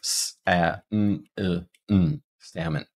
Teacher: even though we have an O in our writing for the second syllable, it will be reduced